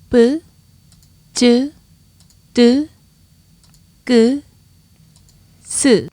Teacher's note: these double consonants have a bit of a buildup of air before you say them